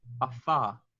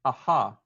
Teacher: Because when you see the F, afa, and you see the H, aha. The lips don't move at all with the H.